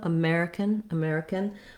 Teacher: we add an n sound and we almost take out that vowel entirely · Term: syllabic n